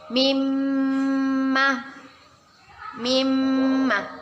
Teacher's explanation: kita baca dengan berdengung dan ditahan dua harokat